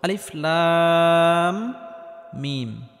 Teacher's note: শুরুতে আলিফ, এই আলিফটি কোনো টান হবে না। লাম, এখানে লামটি 4 আলিফ পরিমাণ লম্বা করে টানতে হবে, কারণ কোনো হরফের উপর যদি মোটা চিহ্ন থাকে তাহলে সেই হরফটি 4 আলিফ পরিমাণ লম্বা করে টেনে পড়তে হয়। · এই লাম হরফটি 4 আলিফ পরিমাণ লম্বা করে টানার পর মিম হরফটির সাথে গিয়ে লাগবে, কারণ মিমের উপর তাসদিদ রয়েছে। আর মিমটি গুন্নাহ করে পড়তে হবে, কারণ মিমে বা নুনে তাসদিদ হলে গুন্নাহ করে পড়তে হয়।